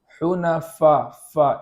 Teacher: کا کنارہ ہے، وہاں پر یہ والا دانت کا کنارہ لگائے، ہونٹوں دانت کا کنارہ نیچے کے ہونٹ سے لگے اور آواز جاری ہو